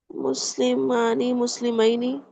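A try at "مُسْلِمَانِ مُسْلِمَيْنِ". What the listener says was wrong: Very good.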